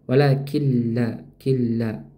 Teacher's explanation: Nah, nun sukun bertemu dengan huruf lam. Maka dihukum idgham bila ghunah yang tidak disertai dengung. · Meleburkan nunnya, dileburkan atau dimasukkan nunnya ke huruf lam tapi tanpa dengan dengung. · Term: idgham bila gunnah